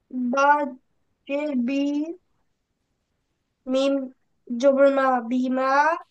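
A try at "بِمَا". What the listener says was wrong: মিম আলিফ আছে তো, মিম আলিফ জবর মা।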